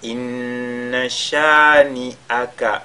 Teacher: on fait al-ghunna sur la lettre nun mushaddada